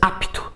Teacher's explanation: a gente coloca um I que não existe aqui